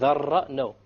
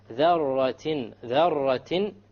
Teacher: You make sure there is no rolling of the R.